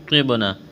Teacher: یہاں نون ساکن کے بعد طوا ہے، حروف اخفا ہے، آواز ناک میں چھپائیں گے، غنہ کریں گے ، طوا کو موٹا کرنا ہے، با کے ساتھ پلس کریں